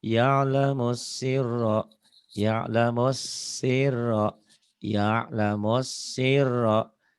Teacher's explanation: S-nya kayak ditahan, R-nya yang ditahan. Tapi jangan lama-lama.